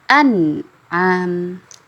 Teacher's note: Misalnya kemarin sudah kita pelajari sama-sama ya, yaitu izhar halqi, yaitu nun sukun atau tanwin yang bertemu dengan 6 huruf ini, nun sukun dan tanwinnya itu dibaca jelas dan tidak berdengung. An'am, seperti itu.